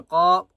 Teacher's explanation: قاف کو ایک الف کی مقدار کھینچ کر پڑھیں گے اور قاف کو موٹا کریں گے۔ لو، لام کو بھی ایک الف کی مقدار کھینچ کر پڑھیں گے۔